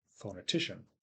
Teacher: the foe is more stressed than the no so we have two syllables with schwa's the second and the fourth the other syllables the first and third are stressed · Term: secondary stress